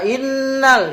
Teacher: nun bertasydid namanya gunnah. Gunnah ditahan 2 sampai 3.